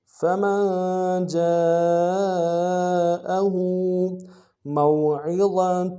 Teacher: فَمَنْ جَاءَهُ مَوْعِظَةٌ، میم کو واو کے ساتھ ملانا ہے، واو لین بغیر کھینچے پڑیں گے، عین کو گہرائی سے ادا کریں گے، ضا کو موٹا ادا کریں گے